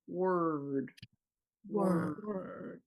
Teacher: the upper back part of my tongue is pulling back while my lips are going forward.